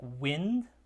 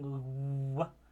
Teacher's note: The initial sound isn't really a closure per se, but it is like a lip rounding, w, and a bit of a closure elsewhere in the mouth. But this somewhat open sound is the glide, the w, and so that's the labiovelar glide, w.